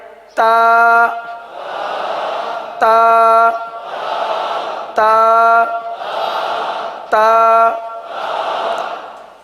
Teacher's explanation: زبان کی نوک کو آپ نے دانتوں کی جڑ پر لگانی ہے